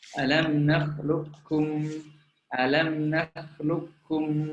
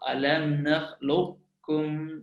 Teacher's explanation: Maksudnya idgham kamil adalah memang huruf qaf memang macam tak ada. Macam di situ hanya ada huruf kaf bersabdu saja.